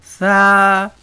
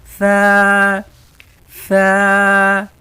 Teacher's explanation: زبان باہر دانتوں کے بیچ میں رکھ کے پڑھنا ہے، لیکن دانتوں کے بیچ میں ایسے رکھنا ہے آپ نے، دبانا نہیں ہے زبان کو، ہلکی سی نوک تھوڑی سی نکالنی ہے۔ ثا، یعنی باہر ہلکے سے نکالیں گے، دانتوں میں دبانا نہیں ہے، صرف ہلکی سی ہوا نکالنی ہے، اور زبان کو ہلکا سا باہر رکھنا، دانتوں کے بیچ میں رکھ کے آپ ادا کرنے کی کوشش کریں، جیسے میں پڑھ رہا ہوں ویسے ہی ادا کرنا ہے آپ نے۔